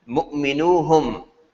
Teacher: There's no noon, the noon disappears and goes away.